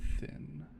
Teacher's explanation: This sound is produced by placing the tip of the tongue just behind the upper front teeth and forcing air through the narrow cap creating friction. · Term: theta